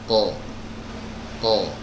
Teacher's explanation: huruf qaf ini adalah huruf yang keluar dari pangkal lidah yang diangkat naik ke atas kemudian ditempelkan ya ke Al hananah Al Azmi ya atau langit-langit yang lunak